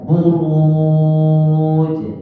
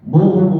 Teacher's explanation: karena didahului huruf ra yang tebal, maka waw menjadi tebal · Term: tafkhim